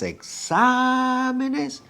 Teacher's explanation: And because the acento never moves from that particular syllable, if you are adding an extra syllable, now the acento in this particular case, exámenes, will fall into the third to last.